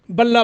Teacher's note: بلا یہاں ادغام ہوا ہے لیکن غنہ نہیں کریں گے